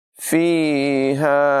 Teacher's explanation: ہا حلق کے نچلے حصے سے ادا ہوگی ، یہاں پر یا مدہ ہے، اس کو بھی لمبا کریں